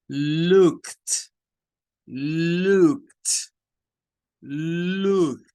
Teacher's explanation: Y le agregamos ese sonido t, que es correspondiente al sonido de la letra T al final.